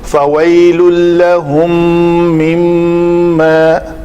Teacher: میم ساکن کے بعد میم آ رہا ہے تو یہاں پہ اس کا ادغام ہوگا. اس کو ادغام شفوی کہتے ہیں.